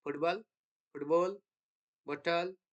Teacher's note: in many accents of English, the glottal stop can replace t in words such as football and bottle